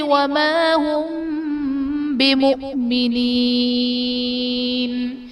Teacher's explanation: بمؤمنین میں حمزہ ساکنہ ہے، جھٹکا دے کر پڑھیں گے